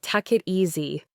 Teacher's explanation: For example, the phrase "take it easy" often sounds like "tuck it easy," where the K sound from take links to the it, and the T from it links to the easy